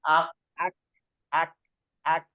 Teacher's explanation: Tempel dulu, Tempel. baru ada hembusan sedikit. Ada keluar Gitu. sedikit angin. Soalnya kalau dia berlebihan, kita dalam menghameskan itu berlebihan, jadi terkesan seperti rokowah dia.